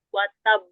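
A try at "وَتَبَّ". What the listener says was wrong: Watab. Jangan dinaber ya. Tidak berlaku naber ketika waqaf pada huruf yang punya qalqalah. Ya, punya qalqalah, sifat qalqalah yang bertasdid itu enggak dinaber ya.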